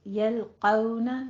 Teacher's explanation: یلقون لام باریک ہے، قوف کو آپ نے پر کرنا ہے